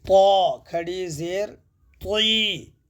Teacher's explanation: مستعلیہ کو زیر ہو تو زیادہ موٹے نہیں ہوتے، دیکھیے موٹے ہوتے مگر زیادہ موٹے نہیں ہوتے